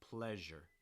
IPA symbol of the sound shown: ʒ